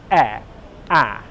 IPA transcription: 'e' 'æ'